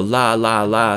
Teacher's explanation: in Arabic the letter Lam is nearly always the frontal l sound